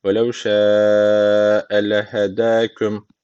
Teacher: Cair bu şekilde. Veev şe uzun medden sonra küçük elif gelmiş. O zaman burada meddi muttasıl var. İki elif uzatmamız gerekiyor.